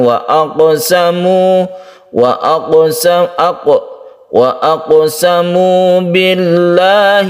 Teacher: Kita awali dari yang depan sehingga kita bisa sempurna di dalam hukum-hukum tajwid yang ada di ayat ini. Wa aqsamu, ada qalqalah sughra, qaf yang disukun kita pantulkan